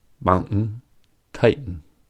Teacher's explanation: instead of pronouncing the T in mountain and titan, they will use glottal stop.